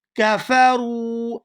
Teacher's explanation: یہاں را کو واو ساکن کے ساتھ ملائیں گے تو کھینچ کر ادا کریں گے کیونکہ یہ واو مدہ ہے